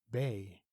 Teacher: Be, where the first character, that's the letter B there, is a voiced bilabial plosive · The second character, that's an E there, is a close mid front unrounded vowel.